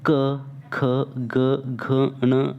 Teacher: जिन व्यंजनों का उच्चारण कंठ और कोमल तालु की सहायता से होता है वे कंठी व्यंजन कहलाते हैं।